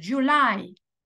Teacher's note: en inglés decimos July la sílaba tónica es la segunda